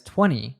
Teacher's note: In the word 20, we have the letter combination NT, and in fast natural speech, native speakers often drop the T sound